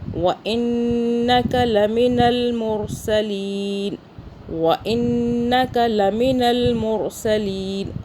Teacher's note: نون مشدد اور میم مشدد پہ یاد رکھنا ہے، غنہ ہوتا ہے ناک میں، یہاں پہ ہولڈ رکھتے ہیں تھوڑی دیر کے لیے۔